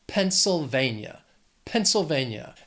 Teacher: It has 4 syllables, stress is on that third syllable.